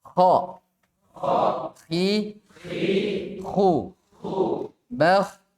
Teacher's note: kha di tenggorokan paling atas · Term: huruf kha